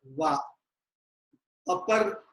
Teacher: The upper row of teeth touches the lower lip. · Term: dental plus labial